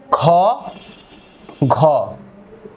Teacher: খ এখানে বাতাসের চাপ বেশি ফলে এটা মহাপ্রাণধ্বনী · যেমন উচ্চারণ যদি করি আমরা ক, খ, গ, ঘ, অর্থাৎ বর্গের প্রথম এবং তৃতীয় এখানে চাপ কম, ফলে এটা অল্প প্রাণ ধ্বনি। আবার খ, ঘ এখানে বাতাসের চাপ বেশি, ফলে এটা মহাপ্রাণ ধ্বনি।